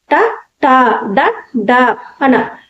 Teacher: పైన అంగిలి భాగాన్ని టచ్ అవుతుంది వీటినే మూర్ధన్యాలు అంటారు.